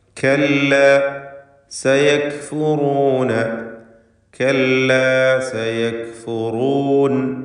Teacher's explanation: കല്ല, സയക്ഫുറൂൻ, എല്ലാ അക്ഷരങ്ങളും തർക്കീഖിൻ്റെ ഇസ്തിഫാലിൻ്റെ ഹർഫുകളാണ്. എന്നാൽ സയക്ഫുറൂൻ എന്നതിലെ റാഇന് തഫ്ഖീം കൊടുക്കണം, തടിപ്പിച്ചുച്ചരിക്കേണ്ട അക്ഷരമാണ്.